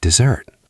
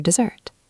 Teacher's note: Dessert has stress on the second syllable.